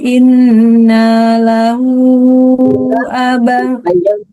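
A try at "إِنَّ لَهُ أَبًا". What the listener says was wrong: Inna panjang nanya ya.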